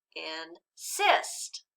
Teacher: move the accent to the second syllable · let's read it again with the accent on the second syllable